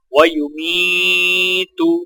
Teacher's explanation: میم کو یا ساکنہ کے ساتھ ملاتے ہوئے ایک الف کے برابر کھینچ کر پڑھیں گے